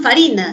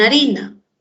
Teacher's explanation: la efe inicial se dejó de pronunciar y fue sustituida por la h